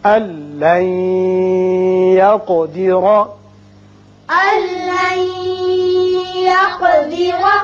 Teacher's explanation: یہاں نون ساکن کے بعد یا آ گیا، یہاں ادغام غننے کے ساتھ ہوگا